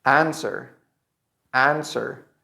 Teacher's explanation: the W is not pronounced in this case. It's not correct to say answer.